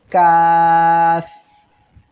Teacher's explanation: এই কাফ অক্ষরে 3 আলিফ টান এমন হবে,